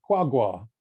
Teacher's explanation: to express a very distant location with 5/5 tone on the first syllable and 3/3 tone on the second syllable